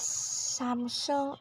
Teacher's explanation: It is Samsung in both accents with a stress in the first syllable.